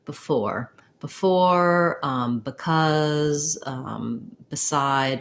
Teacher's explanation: So if I have like a word like before, in that case, I don't say before. I tend to say before with the I vowel instead of the E, tense E sound, because the for is stressed.